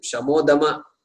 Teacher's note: Visarga drops. So the damaha, this visarga drops, therefore dama remains.